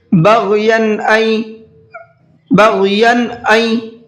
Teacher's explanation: بغین این, یا کے اوپر تنوین ہے اور اس کے بعد میں حمزہ دوسرے ورڈ کے اندر ہے, اور تنوین کے بعد میں حمزہ اگر آتا ہے تو وہاں پر بھی اظہار کرتے ہیں, تنوین کی آواز کو ظاہر کر کے پڑھتے ہیں, غنہ نہیں کرتے ہیں